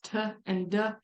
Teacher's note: you can feel how your tongue touches that Ridge right behind your teeth those are alveolar because you touch your tongue to that alveolar · made when you touch your tongue right behind your teeth, right on that alveolar ridge. So the sounds t and d, you can feel how your tongue touches that ridge right behind your teeth. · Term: alveolar sounds